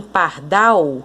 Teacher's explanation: É aquela que a sílaba tônica é a última. A sílaba mais forte é a última. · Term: oxítona